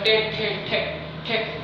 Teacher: उसके बाद टे ठे ठे ठे, ये मूर्धन्य से।